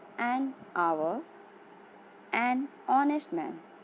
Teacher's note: As you can see the word hour and honest, H is silent